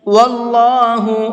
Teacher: اللہ کے لام کو منہ بھر کے پڑھیں گے، اس لیے کہ اللہ کے لام سے پہلے زبر ہے